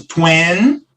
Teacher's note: quando a gente está falando das dezenas, mais uma vez, a nossa sílaba tônica é a primeira. Então, a gente começa 20, e o finalzinho é bem suave, 20.